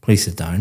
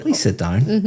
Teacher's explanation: very flat intonation going down.